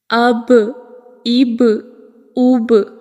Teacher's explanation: قلقلہ کا معنی ہے ہلنا یا پلٹ کر آنا، یعنی جب ہم ان حروف کو ادا کرتے ہیں تو آواز مخرج میں رکتی نہیں ہے بلکہ پلٹ کر واپس آتی ہے۔ جیسے جب آپ گیند کو زور سے دیوار کے ساتھ مارتے ہیں تو یہ دیوار سے پلٹ کر واپس آپ کی طرف آتی ہے۔ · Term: حروف قلقلہ